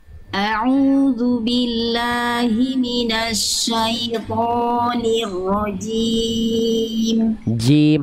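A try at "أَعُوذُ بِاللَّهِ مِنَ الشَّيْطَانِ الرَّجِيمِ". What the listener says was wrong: hati-hati jimnya Jangan becek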